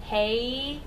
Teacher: Glide of when we're saying hey if you have the a we have that Glide from one sound to another as opposed to when we have just a like a short a sound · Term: diphthong